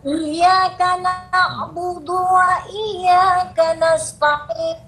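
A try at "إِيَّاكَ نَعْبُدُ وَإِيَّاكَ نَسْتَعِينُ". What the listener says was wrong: Nipis lagi. Cuba sebut huruf T. Ta. Ta. Dia bukan ta. Ta. Nasta'in.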